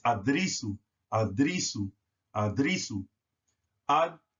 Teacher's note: all R's are rolled in the Nuwabic. It's not adrisu.